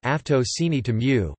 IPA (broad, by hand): aftoˌciniˈto mu